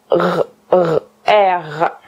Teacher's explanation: Le R produit une résonance ici, au fond de votre gorge, et la résonance est faite avec l'arrière de votre langue